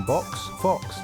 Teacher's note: notice the sharp KS sound at the end it's almost like a hiss